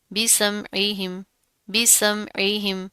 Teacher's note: اس کو آپ نے حمزہ نہیں پڑھنا، عین زیر عی